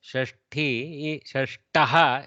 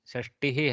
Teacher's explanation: shashti shashtaha has a mahaprana for sixth whereas 60 shashtihi has a alpa prana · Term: mahaprana thakara